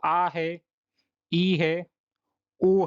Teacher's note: दीर्घ स्वर जिन स्वरों के उच्चारण में ह्रस्व स्वर की तुलना में लगभग दुगना समय लगता है